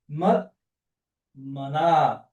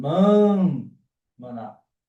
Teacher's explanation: T seguido de N ou M vira N